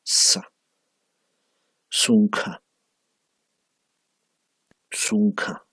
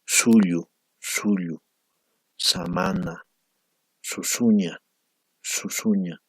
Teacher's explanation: Sa es fricativo, ¿no? O sea, que el aire sale con fricción, ¿verdad? Hay algo que obstruye la total salida del aire, ¿no?